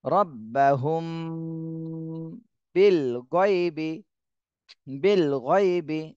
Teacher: তো এর আগেও আমি অনেকবার বলেছি মিম সাকিনের পরে বা আর মিম এই দুইটা হরফ আসলে গুন্না হয়। তো এখানে এই মিম সাকিনের পরে বা, বা এসেছে, এই জন্য এই মিম সাকিন আমাদের গুন্না করতে হবে।